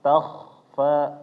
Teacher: Ta-nya jangan terpengaruh dengan kha, ta-nya biasa, takhfa ditebalkan ya Bapak. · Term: kha sukun